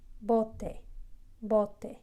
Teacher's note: it's a very soft B. It's not hard like B in English. It's very light. So barely put your lips together, and it's bote, bote.